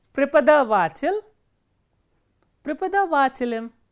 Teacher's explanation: the ending is unstressed, penultimate vowel is stressed